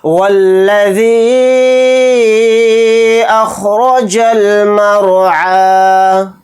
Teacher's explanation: یہاں پر رائے ساکنہ کو موٹا یعنی پر پڑھیں گے کیونکہ رائے ساکنہ سے پہلے زبر ہے · حروف مدہ کے بعد حمزہ دوسرے کلمے میں آ رہا ہے الف کی شکل میں، تو اس لیے اس میں مد منفصل کا قاعدہ ہو رہا ہے. اس مد کو ہم 3 الف کی مقدار ذال یا زیر ذی کے ساتھ کھینچ کر پڑھیں گے